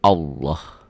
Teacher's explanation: lafaz Allah dibaca tafkhim, tebal, berbunyi Allah. Jadi kalau mengungkapkan ini seperti ada W-nya ya.